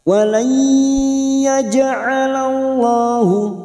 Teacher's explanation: jim sukun qalqalah sugro yang mati asli di tengah kalimat jangan lupa dipantulkan.